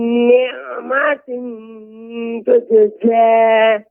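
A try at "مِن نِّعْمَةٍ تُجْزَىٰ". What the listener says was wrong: Jadi huruf zai bukan hanya cukup za. Ya, itu terlalu pendek.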